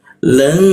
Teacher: Huruf tsa dengungnya di sini. Jadi, jadi cara membacanya qolilan ditahan dua ketukannya